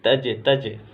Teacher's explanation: یہاں قلقلہ کریں گے، آواز واپس لوٹے گی